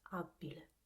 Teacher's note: As you say, they are not double consonants, but in Rome area and near in the south, they tend to double these consonants while they speak.